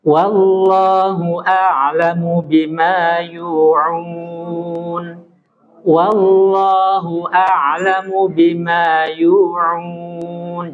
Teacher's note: Bim Nah di sini berkaitan dengan lafzul jalalah ya ingat ya jadi wnya tipis wa yang yang tebal itu di Lam lafdul jalalahnya wallahu aamu Bima yuun wallahu aamu Bima yuun jangan wallah wallah